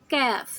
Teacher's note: کاف کو ہم نرمی سے پڑھتے ہیں اور اس کو زبان نیچے کے دانتوں کے پیچھے رکھتے ہیں، نیچے کے دانتوں کے پیچھے.